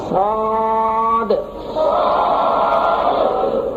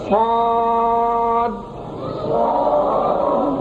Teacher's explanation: آخر میں جو دال ہے اس کو ہلا کر پڑھنا ہے، قلقلہ کر کے